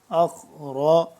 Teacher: خا بھی موٹا پڑھیں گے، را بھی موٹا پڑھیں گے۔